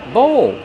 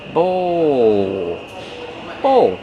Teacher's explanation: Use the long O like no and go plus the dark L.